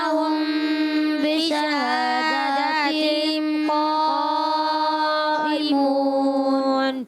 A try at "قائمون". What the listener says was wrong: اس کے قاف کے بعد جو الف آ رہا ہے نا, یہ بھی موٹا پڑھنا ہے, قا نہیں پڑھنا, قا غلط, قا, ٹھیک ہے, یاد رکھنا ہے.